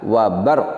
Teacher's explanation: Huruf ro, salah satu sifatnya adalah takrir, bergetar, pendek, sedangkan qaf salah satu sifatnya adalah qalqalah, yaitu tambahan bunyi pantulan.